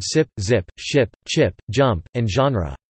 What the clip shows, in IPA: s z ʃ tʃ dʒ ʒ